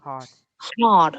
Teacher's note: thì đối với trong tiếng Anh Mỹ thì họ thêm cái âm R nữa